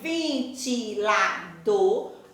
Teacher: na hora que eu pronuncio, eu vou saber que aí, ventilador, a última sílaba é a sílaba mais forte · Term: oxítona